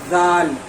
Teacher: دیکھیے دال میں، دال کے بعد جو زال ہے اس میں سیٹی نہیں رہے گا، جیسے سا پڑھتے ہیں اس میں تھوڑا بھی سیٹی نہیں ہوتا، تو اسی طرح سے دال زال میں بھی تھوڑا بھی سیٹی نہیں رہے گا